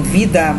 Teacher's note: se ela vai ficar na penúltima sílaba como você tá vendo em vida ela será paroxítona